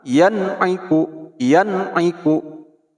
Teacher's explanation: tidak boleh didengungkan apalagi diikhfakan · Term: izhar